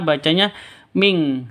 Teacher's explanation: Nun mati bertemu dengan qaf. Cara bacanya samar, didengungkan, siap-siap ke huruf qafnya ditambah dengan ng.